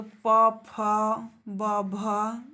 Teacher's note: ये सब ओष्ठ के द्वारा ही बोले जाते हैं। हमारे ओष्ठ आपस में टच करते हैं।